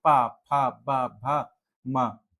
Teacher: दोनों ओठ आपस में छू रहे हैं। · ओष्ठ होते हैं जो ओठ से बोले जाते हैं, जिसमें दोनों ओठ आपस में छुएंगे,